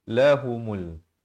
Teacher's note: alif lam qamariah lamnya ada tanda mati asli jadi lam itu dibunyikan